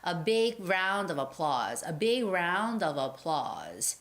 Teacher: the word round and of they sort of link together and sound like round dove